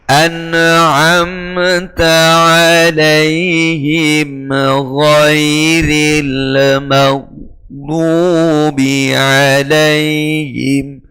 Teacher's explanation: Terlalu cepatnya lisan kita berubah posisi sehingga menimbulkan bunyi tambahan. Nah, itu tawallud namanya.